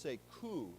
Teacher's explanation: Now, this is a very important word, and we've talked about this before, but coup is short for a French term, coup d'etat, and we don't pronounce the P because it's French, right? Often in French, the last letter, especially if it's a consonant letter, we don't pronounce it.